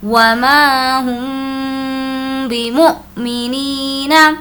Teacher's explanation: حمزہ پر جب جزم ہو تو اس کو ہم جھٹکے کے ساتھ پڑھیں گے۔ حمزہ ساکنہ کے پڑھنے میں جھٹکا ہوتا ہے۔